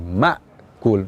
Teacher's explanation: huruf hamzah yang sukun ini ada sifat siddah maka ibarat kita menabrak dinding langsung berhenti